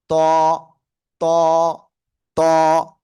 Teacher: জিহ্বার আগা সামনের উপরে 2 দাঁতের গোড়ায় লাগাবেন। ত, মোটা আওয়াজে।